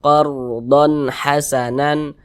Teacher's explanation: izhar dibaca jelas tidak berdengung jadi baca pendek saja qardon donnya itu dibaca jelas kemudian dibaca pendek Karena dia tidak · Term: izhar halqiah